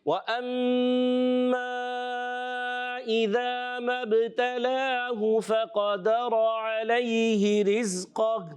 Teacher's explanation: وَأَمَّا میم مشدد میں ایک الف کا غنہ ہوگا